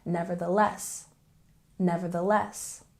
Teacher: we have uh secondary stress on the first syllable and a primary stress on the last syllable